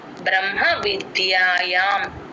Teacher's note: హ కింద మా ఒత్తు ఉంది కాబట్టి మ ఫస్ట్ చెప్పి తర్వాత హ చెప్తాం